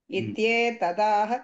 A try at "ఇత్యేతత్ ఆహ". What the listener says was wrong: ఇక్కడ ఇత్యేతదాహ అన్నారు. ఇత్యేతదాహ అనకూడదు. ఇత్యేతత్ ఆహ. ఇది ఏతత్.